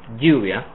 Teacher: So the version with lluvia is a little stronger. It's actually an affricate, and it's kind of between the Y sound and the J sound in English. It's neither one or the other.